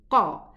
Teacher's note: And then we have the qaf pronounced from the further part of the tongue